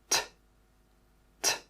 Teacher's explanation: when you make this sound, a puff of air should come out of your mouth. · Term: t sound